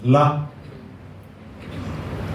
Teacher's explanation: மிக வெளிப்படையாக நாக்கை வெளியே வைத்து உச்சரிக்க வேண்டும்